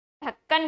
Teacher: ठीक इसी प्रकार से जो ढ है वो मूर्धन्य वर्ण है, तो जब आपने ढक्कन बोला तो जीभ सामान्य गति से पहले मुड़ी, ऊपर वाले स्थान को स्पर्श किया और वापस आ गई, लेकिन नॉर्मल गति से, सामान्य गति से।